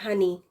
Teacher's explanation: بہت زیادہ پریشر یا ہوا کے ساتھ نہیں، بہت زیادہ آپ نے کوشش نہیں کرنی ہے، کیونکہ یہ اقصت الحلق یعنی deepest part of the throat بالکل باٹم سے ادا ہوتا ہے